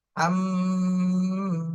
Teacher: হরকতের বামে মিমে তাসদীদ ওয়াজিব গুণা করতে হবে, এরপরে এক আলিফ টান দিতে হবে মাদের হরফ।